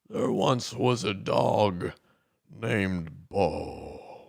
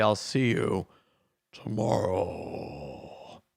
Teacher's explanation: every time at the end of a word of a sentence, the sound would kind of drag on.